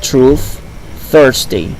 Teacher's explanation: the sound generally written th is a fricative voiceless sound found in words like truth thirsty